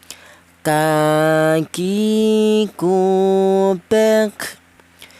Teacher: huruf kaf ini keluarnya huruf berasal dari pangkal lidah atau lidah bagian belakang ya. Di mana lidah bagian belakang itu dua huruf itu huruf qof dan huruf kaf.